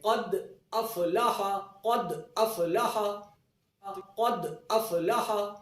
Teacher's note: پر قلقلہ ادنا درجے کا قلقلہ ہوگا، جیسے قد افلح، تو دال درمیان کلمے میں ہے اور ساکن ہے، اور دال پر ہم قلقلہ کریں گے